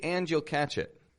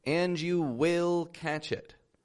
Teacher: I really stressed the word will when you say will too much that's how it sounds it